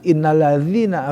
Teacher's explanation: innalladzina harus keluar lidahnya gitu kan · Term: ketepatan makhraj